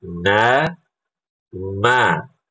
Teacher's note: Cukup ibu bisa rasakan ketika ibu baca huruf nun itu ada getaran di hidung. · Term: huruf gunnah